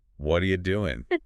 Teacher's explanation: And the U gets shortened to yah.